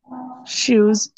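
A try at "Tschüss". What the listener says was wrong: চুজ, শুস না, চ, চয়ের মতো চুজ।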